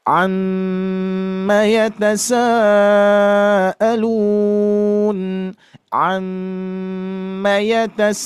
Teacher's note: mim tasdidnya Bapak Ibu harus ditahan ya jangan tergesa-gesa